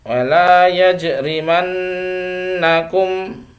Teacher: riman ini agak lama. Kenapa? Karena bacaan hunnah, nun yang bertasdid itu bacaan hunnah ya. Jadi wala yajrimannakum, nah agak lama, mannakum ya.